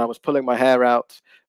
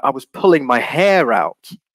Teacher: a real stress on hair and also a rising intonation there to show emphasis in your expression